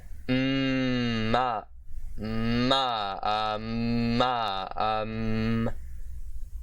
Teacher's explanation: the long voiced bilabial nasal consonant, which is ma, ma, just kind of just like a cluster of two M's, really